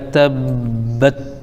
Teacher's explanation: تبت، تا پر زبر ہے، با پر تشدید ہے، اور تشدید والے حرف کو 2 مرتبہ پڑھتے ہیں، یہ آپ کو معلوم ہے، تو تا کو ہم با میں ملائیں گے تب، پھر با پر زبر ہے لیکن آگے تا ساکن ہے تو با کو پھر تا ملائیں گے تو بت ہو جائے گا تبت۔